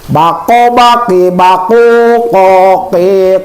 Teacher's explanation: dari qo dari mana mahrajnya Pangkal lidah. Pangk lidah.